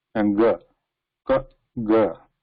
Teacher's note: So ga, you feel that vibration of waves reaching your fingers, the hand surrounding your throat